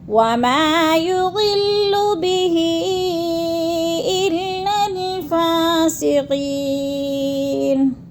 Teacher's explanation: الا الفاسقین، قی میں یا مدہ ہے، یا ساکن سے پہلے قاف کے نیچے زیر ہے تو یا مدہ کو 1 الف 2 حرکات کے برابر ہم نے لمبا کر کے پڑھنا ہے